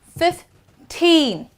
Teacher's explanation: whenever the number ends with teen, the focus would be at the last part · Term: stress